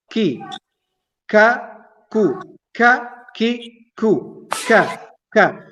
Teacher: the back of the tongue is rising up and touching the hard palate on the top